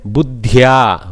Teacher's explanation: Dakara, soft Alpaprana, followed by Mahaprana Dhakara